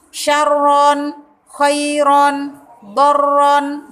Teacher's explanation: Contohnya seperti lafaz khairon, khairon. Nah, ron itu namanya ro yang berharokat fathatain. Harus dibaca tebal.